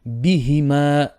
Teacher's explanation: bi and he short, and ma would be 2 beats.